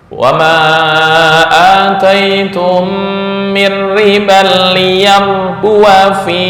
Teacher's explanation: Ketika wasol pendek, seolah-olah alif dibuang.